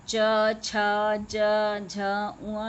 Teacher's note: तालु पे जोर पड़ता है तभी बोले जाते हैं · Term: च वर्ग